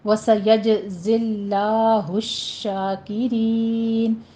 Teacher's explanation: سیج میں جیم کے اوپر قلقلہ کریں گے